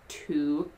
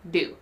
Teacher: the time between when you start to say t and your vocal cords start to vibrate is much longer for to than for do